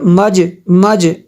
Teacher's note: میم جیم زبر مج، یہ دیکھیں انہوں نے لکھا ہوا ہے امالہ کے جس طرح کریں گے، میم جیم زبر مج مج، یہ دیکھیں جیم ساکن ہے اور یہ حروف قلقلہ ہے، اس پہ قلقلہ کرنا ہے